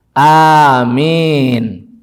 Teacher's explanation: Amin, A-nya panjang, min-nya panjang, dua-duanya panjang, ada matnya pada A dan ada mat juga pada min.